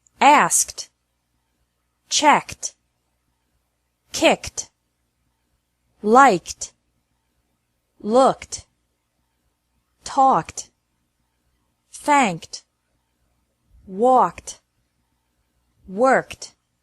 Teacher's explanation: ED is pronounced like T after verbs ending with a K sound.